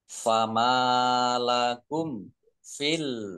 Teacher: mim sukun bertemu dengan huruf Fa bacaan izhar syafawi dibaca jelas